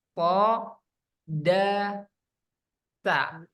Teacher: punggung ujung lidah pada posisi pangkal dua gigi seri atas, yaitu huruf to, dal, dan ta. Nah, punggung ujung lidah sini pada posisi pangkal gigi seri atas.